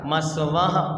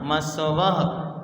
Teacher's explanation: पीछे हा का उच्चारण आना चाहिए, विसर्ग है ना